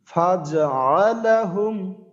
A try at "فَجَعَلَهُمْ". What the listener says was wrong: ফা জবর ফা, জিম জবর জিম জবর না, তাহলে ফাজা ফাজা আলা, কিন্তু ফাজা আলা এমনটা মনে হইতেছে আপনার।